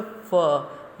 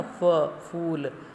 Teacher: देखो, इसको हमने बोला फ, यानी हमारा जो दांत है वो नीचे के होंठ को स्पर्श करते हैं ना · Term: गृहीत व्यंजन